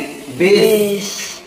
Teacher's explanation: दंत्य स का उच्चारण कहां से होता है, दांत से।